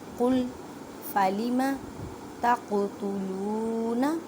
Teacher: قاف ساکن ہے اس وجہ سے کلکلا کریں، کلکلا کا مطلب ہے ہلا کر پڑھنا